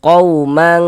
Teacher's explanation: di bagian mangnya itu suaranya itu kita tahan, kita panjangkan sejenak. Nah, kira-kira sepanjang 2 harakat. Qaumang, dan dia tipis, jangan dibaca qaumang mang tebal gitu, jangan ya, ditipiskan. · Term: ikhfa hakiki